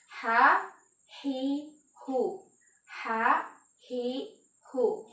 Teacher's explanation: Maka terdapat udara yang benar-benar keluar dari pertengahan tenggorokan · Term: huruf ha